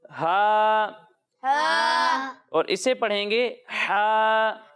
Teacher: لیکن جب ہم ہا اور عین کی ادائیگی کریں گے تو انہیں حلق کے درمیانے حصے سے ادا کریں گے